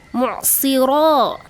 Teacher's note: Mu'sira itu ada mad tabi'i ya karena ro-nya dipanjangkan satu alif ya. Ada alif sebenarnya di sana.